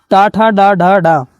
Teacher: इनका जो उच्चारण स्थान है मूर्धन्य से होता है